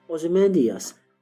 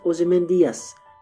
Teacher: if I pronounce the name of the poem Ozymandias, giving it 5 syllables, but Shelley in his time period and in Britain would have pronounced it Ozymandias, giving it only 4 syllables